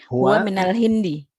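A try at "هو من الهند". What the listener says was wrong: Ahsanti, huwa minal Hindi.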